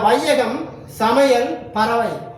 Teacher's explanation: சொற்களில் முதல், இடை, கடை அதாவது இறுதி ஆகிய இடங்களில் வரும் பொழுது தனக்குரிய 2 மாத்திரை அளவில் இருந்து குறைந்து ஒலிக்கிறது. இவ்வாறு குறைந்து ஒலிக்கும் ஐகார குறுக்கம் எனப்படும்.